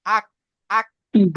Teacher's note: কাফের মাখরাজ জিহবার গোড়া থেকে একটু আগে, তার বারাবার উপরের তালু।